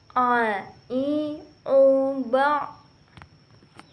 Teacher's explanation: Huruf a keluar dari tengah tenggorokan. Sama dengan kita melafalkan huruf h.